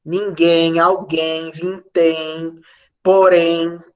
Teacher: todos os ens finais de palavras são ditongos crescentes nasais